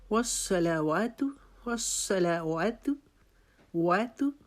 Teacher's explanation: وا کی دفعہ پھر اپنے ہونٹ گول کرنے ہیں اور تا کو باریک پڑھنا ہے اور تا کی پیش کو لمبا نہیں کرنا۔